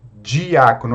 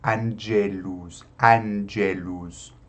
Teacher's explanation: Então, possui o som de DG, como na nossa palavra dia, né?